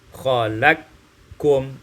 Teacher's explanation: Ayat yang keenam khalaqakum, idghamul qaf fil kaf, diidghamkan qaf pada kaf, khalaqkum.